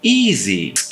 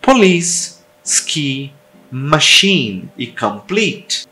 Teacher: é um som alto e tenso com a língua elevada na frente da boca é um som longo e claro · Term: I longo